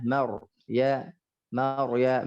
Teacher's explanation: ro kalau dia sukun baris atas maka dia mufakham, dia tebal.